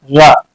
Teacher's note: प्रकंपित। कंपित यानी जी इस वर्ण को बोलने के लिए हमारी जीभ जो है ना कंपन करती, कांपती है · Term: लुंठित व्यंजन